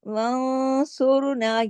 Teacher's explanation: اخفا حقیقی ہو گیا اور غنہ کاملہ، کیونکہ نون ساکن کے بعد سواد آیا ہے